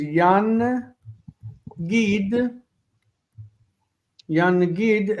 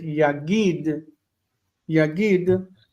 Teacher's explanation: the noon assimilates into the giml and you get yagid yagid.